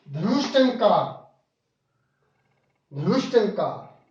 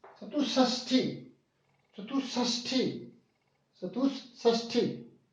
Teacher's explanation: फिर उसके बाद विसर्ग के बाद त है, तो जो विसर्ग है श स्वर रहित मूर्धन्य में बदलेगा।